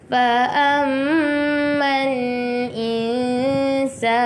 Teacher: Jumpa mim yang ada syaddah wajibul gunnah, kena dengung 2 harokat